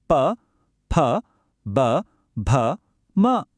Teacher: ಎರಡು ತುಟಿಗಳು ಸೇರಿ ಗಾಳಿಯನ್ನ ನಿಲ್ಲಿಸೋದನ್ನ ನಾವೇ ನೋಡಬಹುದು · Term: ಓಷ್ಟ್ಯ